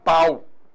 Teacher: Então, nesse caso, a gente tem a vogal A e a semivogal U.